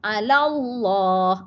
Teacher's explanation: Allah tu pula yang panjang. La tak jadi panjang dah. La pendek. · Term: mad arid disukun